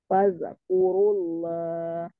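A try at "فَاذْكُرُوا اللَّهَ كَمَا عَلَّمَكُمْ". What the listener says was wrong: Jangan memantul, Afwan. Zaknya jangan memantul. Fazkurullaha. jangan ada desis tadi yang pertama udah bagus Fazkurullaha kama allamakum. ujung mahrodnya Afwan ujung lidahnya nempel di gigi seri depan dikeluarkan sedikit. Fazkurullaha kama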